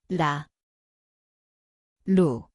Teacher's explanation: l koht on keeleots, kerge puudutus.